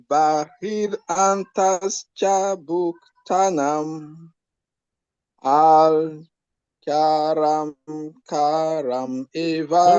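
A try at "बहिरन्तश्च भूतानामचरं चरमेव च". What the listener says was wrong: No, not karam. Charam.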